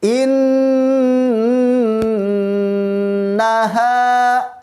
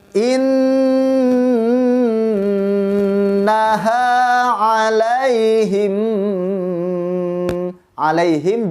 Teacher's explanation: alaihim juga ditahan karena ada mim mati bertemu dengan mim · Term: Idgham Mutamatsilain